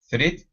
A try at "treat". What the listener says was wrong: Okay, give me a CHR instead of threat.